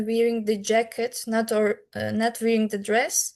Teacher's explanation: you can hear that I stressed uh the jacket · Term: contrastive stress